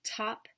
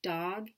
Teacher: the voiceless sound as in the beginning of top and the end of fat the voiced sound as in the beginning of dog